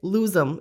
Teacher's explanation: the lose stays the same, but it sort of connects, lose them. It sounds like one word